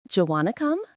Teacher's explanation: If we speak really fast, do you can become j.